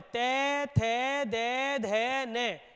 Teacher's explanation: वे वर्ण जिनके उच्चारण में जीभ का अग्रभाग हमारे दांतों को स्पर्श करता है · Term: दंतीय